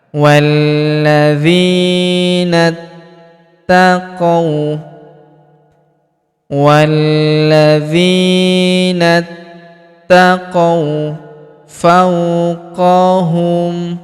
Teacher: Huruf qo kita ayun sekali karena terdapat wau sukun di depannya. · Walladzina walladzina walladzinat walladzinat. Kemudian huruf na langsung lompat masuk sambung ke huruf ta yang berharakat tasydid langsung masuk ke sini alifnya tidak dibaca ini.